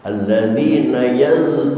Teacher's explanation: dza tempatnya makhrajnya di ujung lidah. Suaranya rembuk tapi tidak pecah.